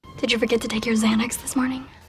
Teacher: the stressed words in this sentence are Xanax and morning these words are longer and louder more emphasized than the other words which are rushed through quickly